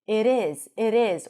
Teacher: And of course we have the flap T. If you aim for American English, the T sounds a little bit like a D.